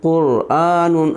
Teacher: را ساکن سے پہلے قاف پر پیش ہے اس لیے را پر پڑھی جائے گی